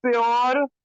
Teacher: यू नहीं आता है, यू में थोड़ा सा ओ की आवाज आ जाती है